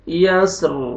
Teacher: واللیل اذا یسر، را پر کریں گے، سٹاپ کریں گے، وقف کی صورت میں را ساکن ہو جائے گا اور را کو پر کریں گے کیونکہ را سے پہلے ساکن، ساکن سے پہلے فتح۔